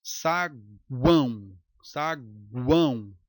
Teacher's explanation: Note que o A é a base, está no meio. U e O nos extremos. Saguão. Aí nós temos o tritongo.